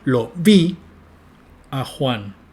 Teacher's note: Y a Juan, si ustedes miran miran una curva de F0, manifiesta una entonación totalmente chata y muy abajo en la curva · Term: desacentuación